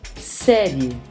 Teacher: O I atua como semivogal, pois forma uma sílaba com a vogal E.